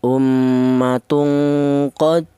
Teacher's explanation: Jadi cara bacanya ini dipantulan ya, dipantulkan, artinya qalqalah itu ada suara pantulan